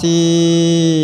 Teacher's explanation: membaca dua huruf jadi satu seperti Huruf yang kedua dengan tasdid disertai dengung maka cara bacanya adalah thim ditahan karena di sini terdapat tasdid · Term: Idam bhunah